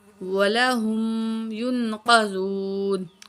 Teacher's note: قاف کو موٹا کر کے پڑھیں گے, نون میں تھوڑا سا غنہ کریں گے